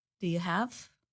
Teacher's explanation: The word U becomes reduced to the sound Y.